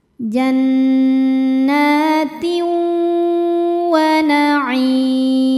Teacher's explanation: Cara bacanya tanwin ini dimasukkan atau dileburkan ke wau disertai bunyi dengungan. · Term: idgham bighunah